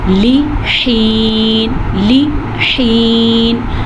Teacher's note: یا مدہ کی وجہ سے اسے ہم کھینچ کے پڑھیں گے, لیکن لام کو کسی بھی صورت پہ لمبا نہیں کریں گے